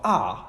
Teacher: in the production of the vowel ah the tongue is actually low and it is pushed to the front part of the mouth